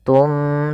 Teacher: Maka di lafal summum bukmun, ini kita tahan suara bacaannya, yaitu kita balikkan suara nunnya menjadi suara mim, tum, sambil ditahan gunnahnya. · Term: iklab